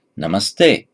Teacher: So by santi, before T, namah becomes namas